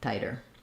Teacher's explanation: spelling of the word helps you just thinking about tie der so the i diphthong and then like a light d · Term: flap T